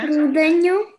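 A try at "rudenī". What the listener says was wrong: Руденю, да.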